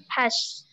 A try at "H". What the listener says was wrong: Very, not hash, ash.